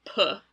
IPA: pʰ